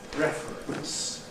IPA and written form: ˈrefərəns (reference)